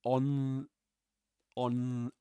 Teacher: because it's pronounced um like this on on like the N sound is pronounced with the tongue being pressed against uh the upper front teeth like this [Music] on the on the on the and let me try and explain that to you uh more care. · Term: dental